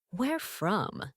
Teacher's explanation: ask yourself where from in a rising tone